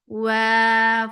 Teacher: for waw, circle your lips and make it 2 counts long